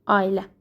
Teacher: Deməli, tələffüzdə a-la i-nin arasına y girəcək.